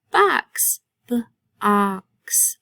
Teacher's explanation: I hear ah. That's the short O sound.